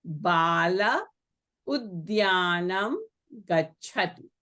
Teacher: Here the Visarga is followed by u, like Arjunaha uvacha. So here again the Visarga will be deleted. So you have Bala udyanam gachati.